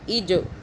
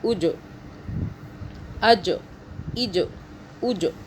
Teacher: جیم قلقلہ کا حرف ہے، جھٹکے کا